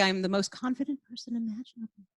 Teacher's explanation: I'm taking very large pauses as I speak I'm not giving the impression of any sort of confidence